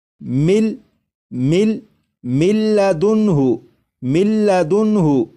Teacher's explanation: من، لیکن جب نون کو لام میں ادغام کریں گے تو نون کی آواز ختم ہو جائے گی اور میم کے بعد پھر لام کی آواز آئے گی ، اور یہاں پر جب ادغام کریں گے تو غنہ بھی